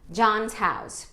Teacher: Agora, John's é um som de Z, Por quê? Porque o que vem antes é um N, que é sonoro.